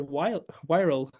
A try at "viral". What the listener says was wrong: Viral with a V. So the candidate has clear problems with the W and the V sound, right? We got vedding. I think we got vife. Now we get viral.